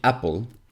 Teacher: words start with a vowel they actually start with a glottal stop